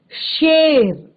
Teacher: जो आपका तालव्य श है शेर, तो ये आपका तालु से निकलता है जैसे च